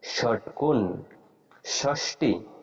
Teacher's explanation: যখন মূর্ধন্য স উচ্চারণ করব তখন মূর্ধাতে আমাদের জিভাটা লাগতে হবে